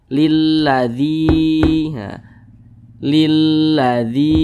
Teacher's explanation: huruf Ya Sukun sebelumnya ada huruf yang memiliki tanda baca kasrah maka huruf tersebut dibaca panjang namanya mad thi'i mad thi'i panjangnya dua harakat dua harakat untuk